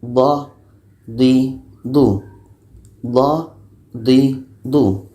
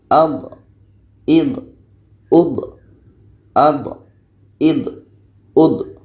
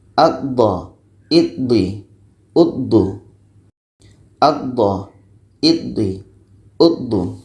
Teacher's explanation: tepi lidah kanan atau kiri bertemu dengan gigi geraham atas dan akhirnya nanti lidah kita akan memanjang sedikit. Itulah istitalah.